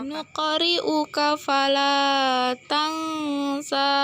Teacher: Di situ terdapat 4 hukum tajwid, yaitu garis 16 hukum bacaan qalqalah sugro karena karakter qalqalah qaf berharokat sukun dan posisinya di tengah kalimat. Cara membacanya dipantulkan secara ringan